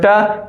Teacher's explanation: ट वर्ग का उच्चारण जो होता है वो मूर्धा से होता है।